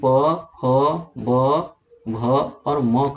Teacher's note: आपके दोनों ओठों का स्पर्श इस पर होता है, और दोनों ओठों का जब स्पर्श होगा तभी ये प, फ, ब, भ और म का उच्चारण आप कर पाएंगे। अगर आपके ओठ में दोनों में से कोई एक पकड़ लिया जाए तो आप नहीं बोल पाएंगे।